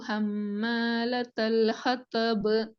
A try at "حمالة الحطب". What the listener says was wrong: ஹத இல்ல ஹதா. ஹதப். ஹதப். ஹதப். ஹம்மாலத்தல் ஹதப். ஹத்தன்னு தான் வருது. ஹத்தா. ஹம்மாலத்தல் ஹதப்.